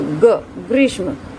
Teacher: आप देखेंगे कि ग जो है एकदम से बोला जा रहा है, पूर्ण रूप में नहीं बोला जा रहा है।